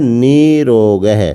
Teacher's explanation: ऋत्व संधि होती है और निर रोग बन जाता है अब जहां पर दो र होते हैं वहां पर एक र का लोप हो जाता है और लोप होने के बाद जो इससे पहले वाला स्वर होता है वो दीर्घ हो जाता है